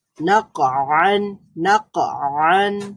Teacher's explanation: এখানে আওয়াজ একেবারেই জারি থাকবে না, বন্ধ হয়ে যাবে। আর কলকলা হওয়ার কারণে পাল্টা আওয়াজ তৈরি হবে।